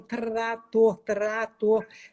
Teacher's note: O T, a pontinha da língua sobe, o R vibra, então trator, trator. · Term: grupo consonantal